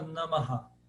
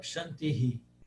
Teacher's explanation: E ele tem um eco, ele ecoa a última vogal. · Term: Visarga